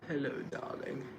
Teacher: You got to say with the vocal fry and make it sound hush.